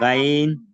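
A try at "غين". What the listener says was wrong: এই যে আপনি বললেন যে গাইন, এই হরফটা যদি গাইন না বলে আমরা গইন, গইন। এটা কিন্তু মোটা হরফ। গইন।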